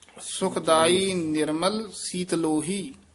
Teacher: ਸੀਤਲੋਹੀ ਪਾਠ ਇਕੱਠਾ ਹੀ ਕਰਨਾ ਛੇਤੀ ਬੋਲਣਾ ਸੀਤ ਲੋਹੀ ਵੱਖਰਾ ਨਹੀਂ ਕਹਿਣਾ